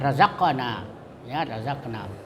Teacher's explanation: itu qatbu jaddin disebut qalqalah, jadi dijelas qafnya